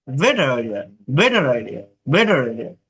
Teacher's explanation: তারা দুটি শব্দকে জোড়া দেওয়ার জন্য আর উচ্চারণ করে একে লিংকিং আর বলে